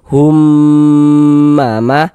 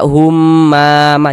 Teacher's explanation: Cara membacanya kita ghunahkan. Jadi di bagian humnya itu suaranya itu kita tahan, kita panjangkan sebentar. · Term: ghunah musyaddadah